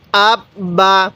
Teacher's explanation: এই হরফটা দুইবার পড়তে হবে, একবার তার পূর্বের হরফের সাথে, একবার নিজের হরফের সাথে।